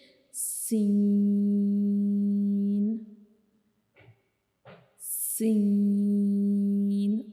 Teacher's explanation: जैसा कि हमने पीछे वाले लेसन्स में, पीछे वाले सबक में हमने कुछ पढ़ा था कि हमारी ज़बान की नोक जो थी वो उन लेटर्स को जो है वो पढ़ते हुए हमारे मसूड़ों को टच करती थी, लेकिन सीन को पढ़ते हुए क्या होगा कि हमारी ज़बान की जो नोक है वो मसूड़ों को टच नहीं करेगी, लेकिन उससे थोड़े से फासले पे जो है वो टच करेगी। · सीन जो है वो एक विसल लेटर है, यानी सीटी वाला हरूफ है, तो इसको हम इस तरह पढ़ते हैं कि जैसे थोड़ी सीटी वाली आवाज़ आती है